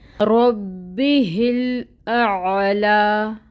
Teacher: اس کے بعد جو حمزہ ہے اس کے اوپر فتحہ کی حرکت ہے، 1 کاؤنٹ ادائیگی ہوگی، محقق ادا کریں گے۔ عین ساکن ہے، وسط حلق سے ادائیگی ہوگی اس کی، اس کو واضح کریں گے۔ اور پھر لام ہے، لام کے اوپر کھڑی مد ہے، 2 حرکت کے برابر لمبا کریں گے۔